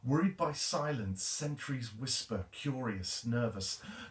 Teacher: Notice the sibilants there, that repetition of the S sound. It's a type of alliteration.